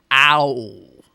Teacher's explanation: a sound like o wow is made up of two sounds but is thought of as one